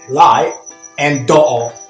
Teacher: in the cockney accent they make use of what we call the glottal stop that means they won't pronounce the t in unstressed syllables